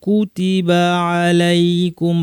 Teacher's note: বায়ের পর কোনো টান নাই, সরাসরি আইনে চলে যাব, যেন একই শব্দে আছে এইভাবে।